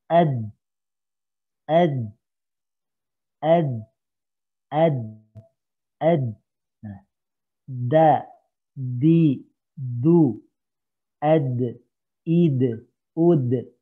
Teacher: Ini gusi bagian dalam. Jadi ujung lidah ini nempel dengan gusi.